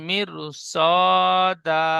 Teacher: র সাকিনের পরে হরফে মুস্তালিয়া 7টি অক্ষরের মধ্যে সদ আসার কারণে রটি বারিক হবে না, পুর করে পড়তে হবে।